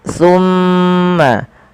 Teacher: tahan suara mimnya sepanjang dua harakat. Tumma jangan langsung dilepaskan karena ia ada bacaan gundah pada lafal bacaan ini. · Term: gunnah